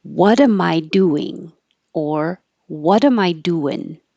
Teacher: the what and the do are emphasized because what is the question word and do is the action